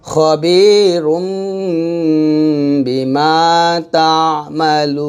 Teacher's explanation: লাম ও পেশ লু, এটা মদের হরফ, মদের হরফের পরের হরফে আমি ওয়াকফ করলে এটা মধ্যে আরজি হয়, মধ্যে আরজি 3 আলিফ পরিমাণ টেনে পড়তে হয়